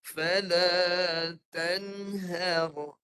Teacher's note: Okey, yang ni muzharah. Muzharah ni dengungnya tak boleh banyak. Sikit je.